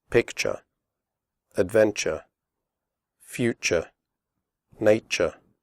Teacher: the first you is pronounced like the ooh in but and the last syllable is pronounced sure